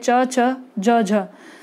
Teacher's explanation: जिस वर्ण का उच्चारण करने में संघर्ष करना पड़ता है, संघर्ष के साथ वायु बाहर निकलती है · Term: संघर्षी व्यंजन